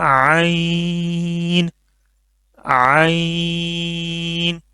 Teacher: حلق کا جو درمیان والا حصہ ہے جہاں سے ہا نکلتا ہے وہاں سے یہ نکلے گا عین